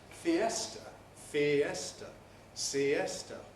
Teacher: because the e is a strong vowel it has the stress and we can't compress before a strong bowel the spanish city